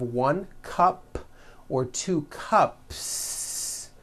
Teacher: unvoiced so for example you have one cup or two cups there's no voicing at the end of that word the S remains unvoiced